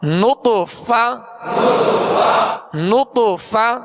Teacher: نون طا پیش نط، فا زبر فا، نطف نطف، فا کی ادائیگی اس سے مخرج سے کیجئے کہ اوپر کے سامنے والے دو دانتوں کے کنارے اور نچلے ہونٹ کا تر حصہ، اس سے ادا ہوتا ہے فا